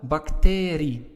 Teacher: as you can see the stress is on the a part of bacterium